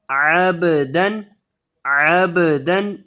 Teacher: با کو ہلا کر پڑھیں کیونکہ با جب بھی ساکن ہوتی ہے اس کو ہلا کر پڑھا جاتا ہے